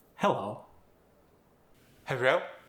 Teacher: The O sound at the end went to more of an EO sound. And then the L was converted to an R sound.